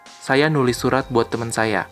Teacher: menulis loses its prefix, but it doesn't revert to its root form tulis. Instead, it maintains the nasal sound at the beginning.